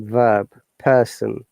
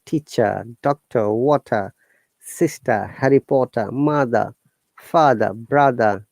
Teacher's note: in british english in most of the cases you'll not listen to the letter r it will be either replace by vowel sound or it will